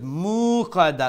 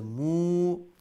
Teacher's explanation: mim pesh mu was a short sound, but because of the wow, that short sound is going to be prolonged to one alif long, which is from the mu, it becomes a mu. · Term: wow madda